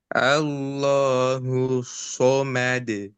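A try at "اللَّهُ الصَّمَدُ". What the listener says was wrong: Di sukunnya kurang tebal. Coba tebalkan lagi.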